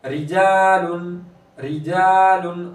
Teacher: रा के नीचे ज़ेर तो रा को बारिक करेंगे, अलिफ मद्दा हो रहा है, एक अलिफ के बराबर खींचेंगे।